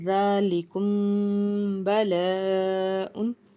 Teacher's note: लाम ज़ेर ली, काफ मीम पेश कुम, मीम साकिन के बाद बा है। मीम साकिन के बाद अगर बा आ जाता है तो यहाँ पे इख्फ़ाए शफ़वी होगा, यानी कि यहाँ पे गुन्ना करेंगे।